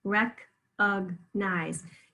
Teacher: very clear E in the first syllable, very clear long I in the third syllable